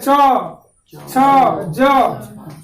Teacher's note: ये वर्ण का उच्चारण कीजिएगा तो जीभ का ऊपरी हिस्सा ऊपर तालु में सट जाता है। जैसे बोलिए छ छ ज, इस तरह से। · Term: तालवीय वर्ण